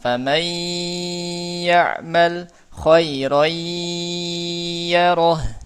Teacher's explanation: Idghamnya dilamain gunnahnya Pak.